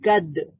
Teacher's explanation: দাল রয়েছে কলকলার হরফ, পাশাপাশি শিদ্দাতের হরফ, এখানে আওয়াজটা বন্ধ হয়ে যাবে, আবার পাল্টা আওয়াজ তৈরি হবে। কাফ ফাতহা দাল সুকুন কাদ, كاف فتحة دال سكون قد، হা ফাতহাতিন হান حا فتحتين حن، কাদ হান।